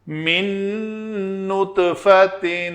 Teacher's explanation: نون ساکن کے بعد نون ہے تو ہم ادغام کریں گے